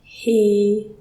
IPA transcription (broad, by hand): hiː